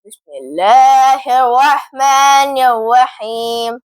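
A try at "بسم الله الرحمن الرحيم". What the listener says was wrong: بسم اللہ میں آپ کی را کی ادائیگی صحیح ہونی چاہیے، دوبارہ پڑھیں۔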